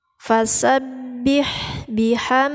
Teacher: ha yang diberi harkat jangan tertukar sama H besar ya ini h nya yaitu di tengah-tengah tenggorokan terus ada sifat hamsnya ada angin ada angin keluar apabila mengucapkan huruf H ini